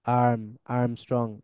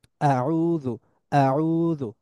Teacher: আরবি হামজা উচ্চারণটা হঠাৎ শুরু হয় একটা বাধা থেকে শুরু হয়